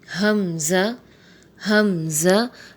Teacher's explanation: حمزہ بھی حروف حلقی میں سے ہے اور حلق کے آخری حصے یعنی نیچے والے حصے سے ادا ہوتا ہے